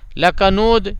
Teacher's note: را پہ زبر ہے نا تو اس کو موٹا کرنا ہے. لکنود یہاں دال پہ قلقلہ ہو جائے گا